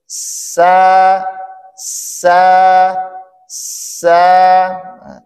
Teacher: sa sa sa didahului dengan keluarnya ya angin ya dan juga Salah satu sifat dari huruf sa ya ituu sirofir ya mendesis · Adapun makhraj dari huruf sa yaitu ujung lidah bertemu dengan bagian bawah dari dinding dalam gigi seri bagian bawah, lalu suaranya keluar melewati celah antara kedua gigi seri tersebut. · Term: huruf Sin